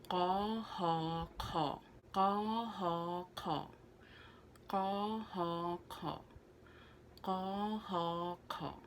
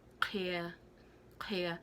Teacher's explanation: It's in the back of your throat, and it's almost like you're coughing up phlegm.